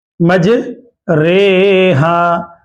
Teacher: री नहीं पढ़ेंगे, इमाला की वजह से ये रा मजहूल पढ़ेंगे